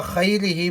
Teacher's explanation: خیرہ میں خا کو موٹا پڑھیں گے چونکہ نقطے والا خا ہے